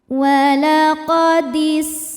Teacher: Sin punya sifat namanya sofir. Artinya ada suara desisan seperti suara ular.